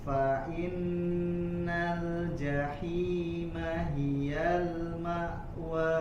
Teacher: Fa Jangan fa'in ya, jangan ada isba, jangan menambah kadar harokatnya, langsung dimasukkan ke huruf nun bertasydid.